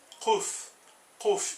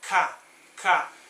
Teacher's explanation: Você consegue perceber que o som ele não sai igual na frente da boca, igual o K